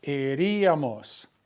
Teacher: that accent is breaking up what we call a diphthong